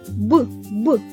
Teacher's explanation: звук Б приголосний бо на шляху повітря що виходить з ротика постають губи він дзвінкий бо наш голос працює звук Б твердий при звуковому аналізі він позначається однією рискою А · коли ми промовляємо твердий звук Б наш язик спокійно лежить на дні ротика